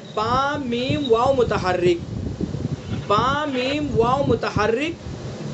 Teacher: یہ تینوں حروف دونوں ہونٹوں سے ادا ہوتے ہیں، ٹھیک ہے. دونوں ہونٹوں سے ادا ہوتے ہیں.